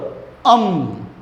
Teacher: હવાનો એક સાથે જથ્થો આમ નાકમાંથી છૂટ્ટો ફેંકાય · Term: અનુનાસિક